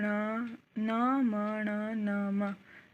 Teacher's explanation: पंचम वर्ण आ जाते हैं इसमें, जो नासिका से बोले जाते हैं